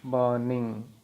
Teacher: ऐसे बर्निंग इसमें 2 सिलेबल है और ये निंग, बर्निंग, इसमें पूरा ये यद्यपि रेड किया हुआ है, लेकिन यहाँ पे ब है, ब जो साउंड है वो स्ट्रेस्ड है, और इंग है वो स्ट्रेस नहीं है।